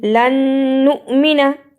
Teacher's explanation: نون مشدد ادا ہوا، ساتھ ہی نُ پہ جھٹکا لگایا اور نا کو جلدی پڑھا